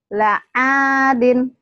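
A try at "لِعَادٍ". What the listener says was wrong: Panjang. La'adin.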